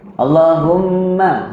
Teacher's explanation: Humma tu ada sabdu kena dengung. Kena henjut.